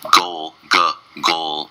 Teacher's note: with the L sound that means the tongue goes up to the roof of the mouth